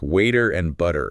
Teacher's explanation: The T in words like water or butter, it ends up sounding almost like a soft D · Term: flap T